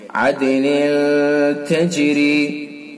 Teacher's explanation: اور عدن تجری، نون کے نیچے 2 زیر کی تنوین ہے، تنوین کے بعد تا ہے اخفا کے 15 حروفوں میں سے، تو اس کے اندر اخفا ہوگا، اس کے اندر غنہ کریں گے